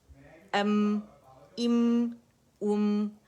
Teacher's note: جب میم سکون پہ آئے تو آواز ایک کاؤنٹ کے لیے چلی